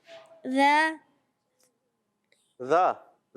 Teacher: زبان کا سرا اور اوپر کے دانتوں کے اندرونی کنارے سے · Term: ذال